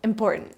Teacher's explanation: That second T disappears completely.